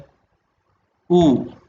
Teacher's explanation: U നോക്കേ, it is a back vowel, it is a close vowel, it is a rounded vowel